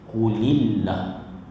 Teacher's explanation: kalimah Allah sebelumnya berbaris di bawah dibaca dengan nipis, qulillah. Jangan kita tersilap baca qulillah.